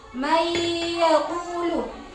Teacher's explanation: Jadi di sini ada nun mati bertemu iya. Jadi harus dimasukkan dan dengung. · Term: idghamhunah, idgham bi gunnah